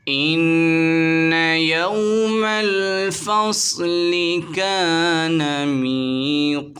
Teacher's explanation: واو ساکن سے پہلے زبر آ رہا ہے، واولین ہوگا، بغیر کھینچے پڑھیں گے۔ صاد حروف مصعلیہ میں سے، اسے موٹا پڑھیں گے۔ الف سے پہلے زبر آ رہا ہے، الف مدہ ہوگا، ایک الف کی مقدار کھینچیں گے۔